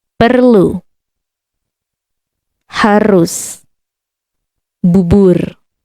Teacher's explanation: This letter is always sounded, no matter where it occurs. It is the light roll, not the American R or the guttural R, French or German. No. It's always rolling R.